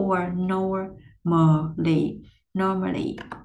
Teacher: Tuy nhiên các bạn lưu ý giúp mình, ở đây mình có một cái âm, nó là âm UR, có âm R phía sau, cho nên là mình phải cuộn tròn cong lưỡi lên gồng âm R để cho nó ra cái chất của Anh Mỹ ha. Âm UR ở đây mình sẽ chu môi, hớp má vô.